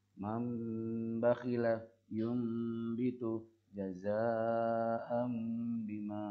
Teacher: Maksudnya membalik atau menukar suara nun sukun atau tanwin diganti dengan suara mim. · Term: Iklab